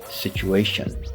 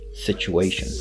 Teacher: Next, we have situation. And here, we're going to change the T into a ch sound